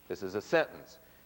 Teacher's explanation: go up up on the next to the last syllable and down on the last syllable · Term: pitch drop